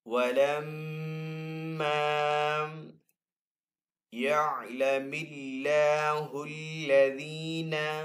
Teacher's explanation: اللہ عز و جل کے نام کے اندر جو لام ہے اس کو ہم یہاں پہ باریک پڑھیں گے کیونکہ پہلے والے حرف کے نیچے زیر ہے